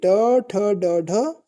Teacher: ट, ठ, ड, ढ ये जो है ये मूर्धा से बोली जाती है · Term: मूर्धन्य ध्वनि